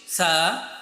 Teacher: এটাকে উচ্চারণ করার সময় তোমার জিহ্বার আগাটা, আমরা তা উচ্চারণের সময় দাঁতের গোড়াতে আমাদের জিহ্বার আগা লাগিয়েছিলাম, কিন্তু আমাদের সা উচ্চারণ করার সময় জিহ্বার আগাটা তোমার দাঁতের আগার সাথে লেগে যাবে।